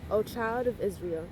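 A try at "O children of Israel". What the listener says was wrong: Look at the word before you pronounce the word. It don't say "oh child." It says "oh children." Oh children of Israel.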